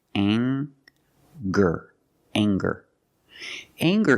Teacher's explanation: We have the nasal sound plus the hard G, the G sound. Together, anger.